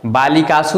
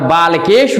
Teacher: बालिकासु में दंत स है, और बालकेषु में मूर्धन्य स है।